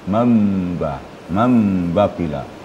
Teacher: Nun itu dalam bacaan berubah menjadi mim jadi ber berarti bibir kita diketupkan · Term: iqlab